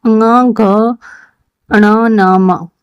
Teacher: उच्चारण स्थान नाम जो है इनका नासिकीय, मतलब नाक की सहायता से ही बोले जाते हैं।